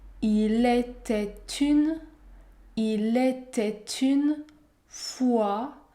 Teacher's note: Ici, il y a une liaison obligatoire. Vous devez prononcer la consonne T.